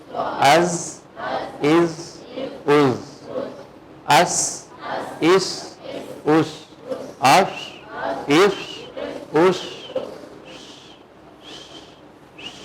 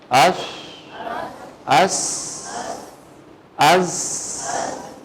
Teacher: ان کی پروننسیشن میں سٹی کی آواز کا آنا ان کی صفات میں شامل ہے. اس لیے ان تینوں حروف کو حروف سفیر یا سفیریا بھی کہتے ہیں.